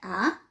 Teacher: vocês têm que cuidar o A para falar sempre aberto